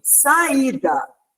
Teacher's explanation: Está sozinho, o I está sozinho na sílaba e ele é tônico. Ele é o forte, é a sílaba mais forte.